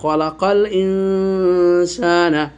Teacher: নুন সাকিনের পর সিন এসেছে, ইখফা হয়েছে, এই জন্য আমরা ইখফা করেছি এবং গুন্নাও করেছি। খলাকাল ইন, একালি পরিমাণ গুন্নার পরিমাণ।